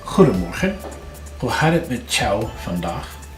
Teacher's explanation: if you have met and jou, a T and a J together, they're going to make that CH sound. You don't have to do that, but you need to know it.